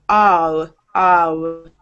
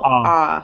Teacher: your lips don't wrap up into a W afterwards. You don't go ah, ah. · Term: ah sound